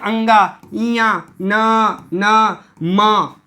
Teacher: ये सारे जो आप बोलेंगे तो नासिका के माध्यम से आपको इसका आवाज निकलेगा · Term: अनुस्वार